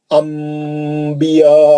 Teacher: नून साकिन के बाद बा आया तो मीम की आवाज से पढ़ते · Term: इखलाब